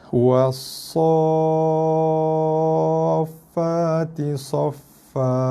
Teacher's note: Tekan pada huruf fa hanya selepas sad itu kita baca cukup dengan kadar 6 harakat. Cukupkan 6 harakat tu baru tekan.